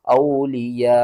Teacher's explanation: وقف لازم ہے۔ حمزہ واو زبر او، لام زیر لی، اولی، یا الف مد زبر یا، 5 الف کے برابر کھینچنا ہے